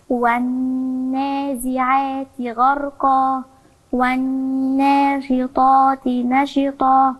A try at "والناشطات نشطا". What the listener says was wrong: لا نشطا إزاي نشطا إزاي ما يمكنش الشين من حروف القلقلة يبقى لما أقول نشطا يبقى أنا هزتها اللي من حروف القلقلة القاف الطاء الباء جيم دال قطب جد تمام ما بيكون ساكنة أو بقف عليها أقلقلها ساكنة في